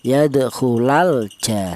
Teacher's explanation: Jelas bahwa di sini ada lam matinya kelihatan itu namanya izhar. · Lam matinya al ini dibaca jelas ya.